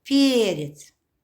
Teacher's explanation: ударение падает на первый слог перец позиция звука в слове в конце согласны глухой мягкий закрашиваем правильно